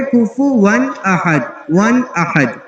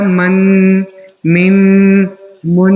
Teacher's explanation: جس طرح میں نے پڑھ کے دکھایا من، من، من، یہ جو میں لمبا کر رہا ہوں ناک میں لے کے جا رہا ہوں یہ ہے غنہ کرنا